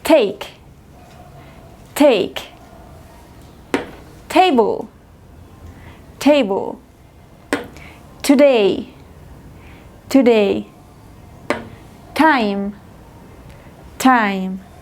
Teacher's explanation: Es un sonido que expulsa el aire, pero no tiene vibración de las cuerdas vocales. Aquí vamos a ver la imagen de cómo se ubica la lengua para decir este sonido.